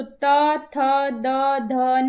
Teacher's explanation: आप बोल के देखेंगे तो जो आपकी जिह्वा है वो आपके दांतों का स्पर्श कर रही है, तो त थ द ध न, न इसमें भी आएगा और न को नासिका में भी लेंगे हम।